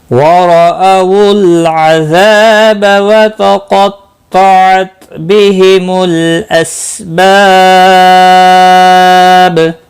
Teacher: وتقطعت، قاف اور طا دونوں مستعلیہ ہیں، پر پڑے جائیں گے، تا ساکن کو ہلانا نہیں، بہم، لام ساکن کو ہلانا نہیں، اسباب، سین ساکن کو ہلانا نہیں، با الف مدہ ہے، ایک الف کے برابر کھینچ کر پڑھیں گے اور وقف کی صورت میں با ساکن پڑھا جائے گا، اس پر قلقلہ بھی ہوگا